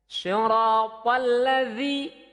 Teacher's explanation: za mulutnya agak melebar, kemudian digigit ujung lidah, keluarkan hurufnya za